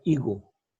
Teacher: a fines del siglo XVI, este sonido aspirado se pierde y queda higo, y conservándose solamente la grafía de esto.